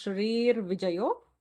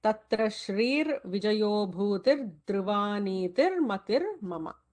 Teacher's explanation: Notice the Shrihi Visarga followed by V. It becomes Shrir Vijayo.